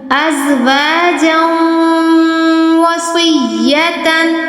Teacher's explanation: تنوین کے بعد شد آئی، ہم نے یہاں پر غنہ کیا